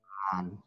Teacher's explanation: jadi untuk Chan itu aslinya nada bangkit